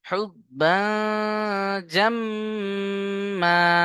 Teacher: হা বা পেশ হুব, বা দু জবর বা। তানবিনকে নাকের মধ্যে তুলতে হবে, কারণ তানমিনের পরে ইকফার 15টি অক্ষরের মধ্যে জিম এসছে, তাই না? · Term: গুণনা